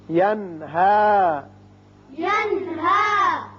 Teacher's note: نون ساکن کے بعد ہا ہے جو کہ حروف حلقی میں سے ہے، لہذا یہاں اظہار حلقی ہوگا